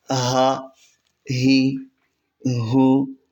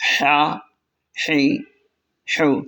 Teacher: حمزہ اور ہا حلق کے نچلے حصے سے ادا ہوتے ہیں، جبکہ عین اور حا حلق کے درمیان والے حصے سے، اور غین اور خا حلق کے اوپر والے حصے سے۔ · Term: حروف حلقی